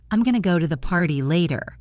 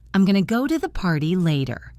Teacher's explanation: Notice the hard R in party and later.